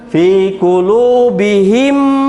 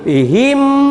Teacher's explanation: 2 harokat ditasdidkan disertai dengan dengung ya gitu. Fi qulubihim, ada tasdid bihim, gitu. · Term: idgham mimi